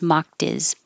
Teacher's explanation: We can get rid of the H and connect the previous consonant to the vowel. So it will sound like diz, mocked is.